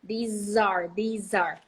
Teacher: the Z is absolutely clear when there is a verb to be right after